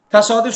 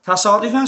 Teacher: Amma təsadüfən sözündə isə uzanma aradan çıxdı. Vurğu gəldi A-nın üstünə. Uzanma yoxdur.